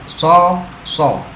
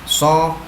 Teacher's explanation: Berikutnya huruf shad. Pertama sifatnya adalah isti'la, lidah terangkat, so. Yang kedua sifat sofir atau sifat ada suara tambahan, bas ya.